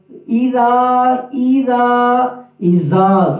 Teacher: ذال نرم حروف میں سے ہے، زبان کے لوگ اوپر والے دانتوں کی نوک کے ساتھ اذا زا سیٹی کی آواز نہ ہو